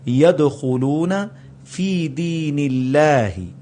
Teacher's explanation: آگے يَدْخُلُونَ، یہ اب جو دال ہے یہ انہی قطب جد کے الفاظ میں سے ہے، تو دال پر قلقلہ ہوگا اور یہ مڈل میں آ رہا ہے · اب نون کے نیچے زیر آئی تو اللہ کو پتلا کر کے پڑھا جائے گا